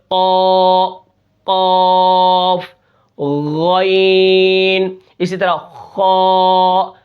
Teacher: صفت استعلاء کی وجہ سے زبان کی جڑ اوپر کی طرف اٹھتی ہے جب ہم ان کو موٹا کرتے ہیں